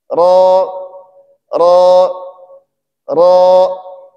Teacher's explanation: Ujung lidah kita bertemu dengan gusi bagian atas. · Ikhwan akhwat mulakan Allah Subhanahu wa taala, huruf ro adalah huruf tebal. Jadi ketika kita menyebutkan huruf ro, maka kita diperintahkan untuk mengangkat pangkal lidah kita agar huruf ro itu menjadi tebal.